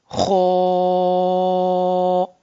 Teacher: हम लिप्स को थोड़ा सा सर्कुलर शेप में लाएंगे, थोड़ा सा राउंड शेप में लाएंगे, तो साउंड विल बिकम लाइक खो